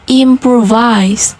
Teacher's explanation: The main stress is at the beginning of the word for am on that syllable, improvise.